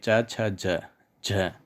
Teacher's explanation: ये हिंदी में स्पर्श संघर्षी हो गए, यानी इनके उच्चारण में अंतर आ गया